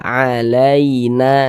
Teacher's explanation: Akan tetapi berhati-hati ya mengucapkan huruf lin yang terjadi pada huruf ya sukun. Jangan sampai condong ke huruf e, jangan dibaca alaina, jangan, tapi dibaca alaina seperti itu.